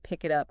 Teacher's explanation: That final consonant of one word just flows right into the starting vowel of the next like pick it up becomes peeky. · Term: consonant vowel leaison